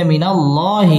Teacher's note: আল্লাহ শব্দের লাম পুর হবে